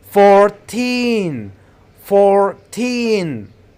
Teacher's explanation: When counting or referring to the teen numbers, stress the second syllable teen. Make it longer, louder, and high in pitch. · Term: teen syllable